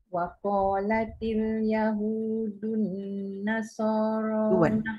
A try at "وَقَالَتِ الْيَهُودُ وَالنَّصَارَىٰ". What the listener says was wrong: Ada wow. Yahud wan nasara.